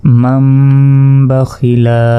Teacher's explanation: নুন সাকিনের পর বা এসেছে তাহলে এই নুনের উচ্চারণ বাদ যাবে এই মিম গিয়ে সরাসরি এ মিমকে ধরতে হবে মিম মিম জবর